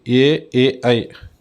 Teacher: అంటే కంఠాలు తాలవ్యాల నుంచి ఉద్భవించేటువంటివి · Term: కంఠతాలవ్యు